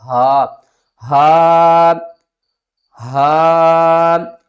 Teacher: یہ حلق کے نیچے والے حصے سے ادا ہوگا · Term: حروف حلقی